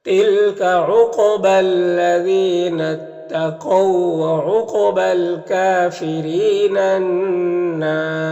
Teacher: اور یہاں پر الف لام حروف شمسی نون کے شروع میں تو الف لام دونوں کو نہیں پڑھیں گے، یہ نون مشدد جو ہے یہ نون سے مل کر پڑھا جائے گا، نون مشدد میں غنہ ہوگا، اور یہاں پر الف مدہ ہے، وقف کریں گے تو را کے اوپر پیش آ جائے گا، تو را کو پر پڑھیں گے، اور مد عارض وقفی ہوگا تو اس طرح سے پڑھیں گے تِلْكَ عُقْبَى الَّذِينَ اتَّقَوْا وَعُقْبَى الْكَافِرِينَ النَّارُ۔